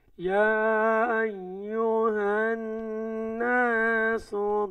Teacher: তাসদিদ থাকার কারণে এই নুন গুন্না হইব। এই গুন্নারে ওয়াজিব গুন্না বলে।